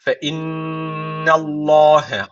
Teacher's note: Allah lafzı burada kalın okunacak Neden Çünkü öncesindeki harf üstten bağlanıyor Dolayısıyla Allah lafzı kalın okunacak innallahe ama n ince unutmayın Fe